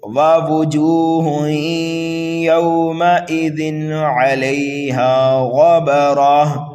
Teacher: تنوین کے بعد عین آنے کی وجہ سے یعنی حروف حلقی آنے کی وجہ سے یہاں پر اظہار ہوگا، صاف صاف کر کے پڑھیں گے۔ وَوُجُوهٌ يَوْمَئِذٍ عَلَيْهَا غَبَرَةٌ، غین کو پر پڑھیں گے، مستعلیہ میں سے ہے، را کو پر پڑھیں گے اس لیے کہ را کے اوپر زبر ہے۔